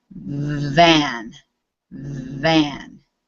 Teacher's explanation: feel how your throat vibrates you can feel it buzzing